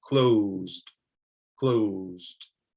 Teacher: instead of the t sound like lights you have something of a d sound